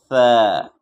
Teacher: ثا کو کیسے نکالیں گے؟ زبان کا جو نوک ہے اس کو اوپر کے ثنایا علیہ کے جو اوپر کے جو بڑے بڑے دانت ہیں اس میں ٹچ کریں گے۔